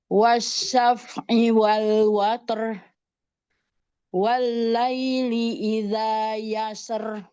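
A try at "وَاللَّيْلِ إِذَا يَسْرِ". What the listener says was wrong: Ro-nya tidak terlalu yasr, tidak di tarkik, takrirnya tidak terlalu berlebih, Bun. Jadi yasr, yasr, tidak yasr.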